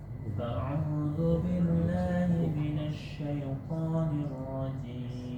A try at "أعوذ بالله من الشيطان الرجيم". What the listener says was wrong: Masih jangan ada pantulan. Syaitonir rajim. A'udzu billahi minasyaitonir rajim. Syaiton. Pantulannya di syaiton, jangan diseret. Syaitonir rajim.